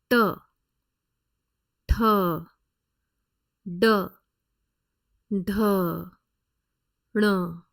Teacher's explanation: all the letters that we have learned today are retroflex so tip of the tongue is curled Inward and placed back against the palet